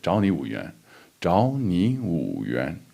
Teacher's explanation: So 2 second tones, and then the final one is the third tone.